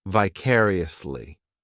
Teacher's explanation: the fourth syllable has the schwa